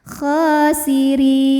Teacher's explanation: Tipis yang dimaksud adalah suaranya langsung keluar, ringan, diakibatkan pangkal lidah kita menurun atau bagian paling belakang dari lidah kita nggak naik ya, datar. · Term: dibaca secara tarqiq